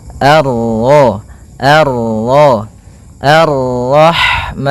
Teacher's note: bertemu dengan huruf ro yang berharakat tasydid maka rnya kita baca dengan tafkhim